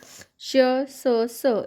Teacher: श स यांच्या उच्चाराच्या वेळेस जास्त हवा बाहेर पडते आणि हवेचे घर्षण होऊन उष्णता निर्माण होते म्हणून यांना उष्मे असे म्हणतात अर्थात इशद या शब्दाचा अर्थ असा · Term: घर्षक